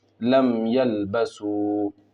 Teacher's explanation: اظہار شفوی ہوگا، میم کو ظاہر کر کے پڑھیں گے